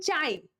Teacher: আ হচ্ছে একটা পূর্ণ স্বরধ্বনি আর ই হচ্ছে একটা অর্ধ স্বরধ্বনি। একটা পূর্ণ আর একটা অর্ধ মিলে নরমালি 1 আর 0.5 মিলে 1.5 হওয়ার কথা বা 1.5 হওয়ার কথা, কিন্তু বাংলা ব্যাকরণে আমরা এটাকে বলি হচ্ছে দ্বি স্বরধ্বনি।